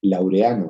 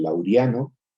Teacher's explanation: Estas dos vocales en hiato que se encuentran juntas y una de ellas sufre un proceso de cambio para transformarse en diptongo porque supone una pronunciación más económica, una pronunciación, si quieren, con menos esfuerzo, ¿no? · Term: diptongación de los hiatos